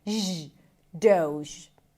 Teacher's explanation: It's a D sound, O as in go, and then the Z sound as in vision.